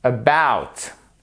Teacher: Et le pauvre petit A tout seul là qui se retrouve tranquille, si je puis dire, tout au début, il est quand même prononcé, mais il est prononcé comme ça s'appelle un schwa et c'est un E ténu au niveau de la prononciation